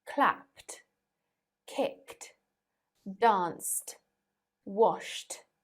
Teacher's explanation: in this case e d is pronounced as t